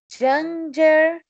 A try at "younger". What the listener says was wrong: No. Isso aqui não é símbolo de J, não é a letra J.